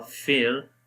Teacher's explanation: If Ra comes with Sukun sign, and if before letter has a Kasra, at that time also we read Ra in light sound.